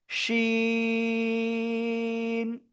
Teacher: খেয়াল করবেন, এই যে তিনটে দাঁত এবং এর উপরে যদি তিনটে নুক্তা হয়, 1 2 3, তিনটা নুক্তা হয়, তাহলে এই অক্ষরটা হবে ওই একই জায়গা, জিহ্বার মাঝখান তার বরাবর উপরে তালুর সাথে লাগিয়ে সা সা শব্দ করে এই অক্ষরটা উচ্চারণ করতে হবে।